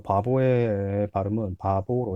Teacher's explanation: 한국 사람들 대체로 첫 번째 비읍과 두 번째 비읍이 같다고 생각하지만 실제로 발음되는 음성은 서로 다르다. 두 번째 비읍은 모음 사이에서 유성음으로 실현되는 것이다. 유성음으로 실현된다는 말은 그냥 울림 소리로 바뀐다.